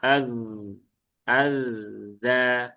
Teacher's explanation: zal itu ada di ujung lidah gigi seri atas. Jadi ya sentuhkan saja, nanti akan keluar al za.